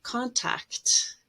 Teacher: you have two stop sounds at the end there you make it plural very often we drop the t contacts